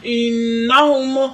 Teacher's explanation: نون مشدد میم مشدد پر گنہ کرتے ہیں